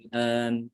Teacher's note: Kata al-an itu bisa dibaca dengan cara mengganti huruf hamzah kedua dengan alif. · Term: Ibdal atau isba'